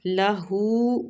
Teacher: لہو الٹا پیش ہے، ہو میں تو اس کو بھی ایک حرکات کھینچ کے پڑھیں گے